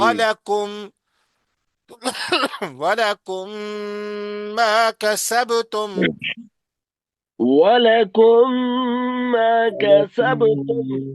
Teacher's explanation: دوسرے میم میں داخل ہو جائے گا، ادغام ہو جائے گا، یعنی داخل ہو جائے گا، ملا ملا کے پڑھیں گے. وَلَكُمْ مَا كَسَبْتُمْ، ولكم لكم ما ما كسبتم.